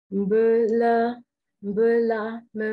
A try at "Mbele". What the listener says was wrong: Ce n'est pas là. C'est le. C'est pas le A, mais E. Mbele.